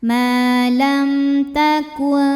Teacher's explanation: karena mim sukun menghadapi huruf ta, maka bunyi mim sukun dibunyikan dengan jelas ya. Di hadapannya bukan mim bukan ba, jadi masih m jelas. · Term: izhar syafawi